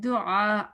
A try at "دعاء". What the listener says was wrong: آئین کو واضح کرنا ہے زبان پیچھے.